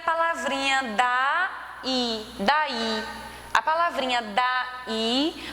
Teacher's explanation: A palavrinha daí, você percebe que o i, ele tem uma tonicidade maior, por isso que é oxítona, e foi acentuado porque é um ditongo.